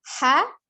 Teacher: H ada di tenggorokan bagian tengah H bentuk mulutnya juga tetap langsung masuk di angkat panglidah suaranya